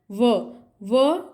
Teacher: इनका उच्चारण स्थान क्या है, दंत। व का उच्चारण होता है दंत प्लस ओष्ठ से